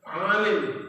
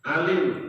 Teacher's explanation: Huruf ain sama hamzah berbeda sedikit, ya. Kalau ain di tengah-tengah tenggorokan, kalau hamzah di belakang tenggorokan, itu menimbulkan makna yang berbeda.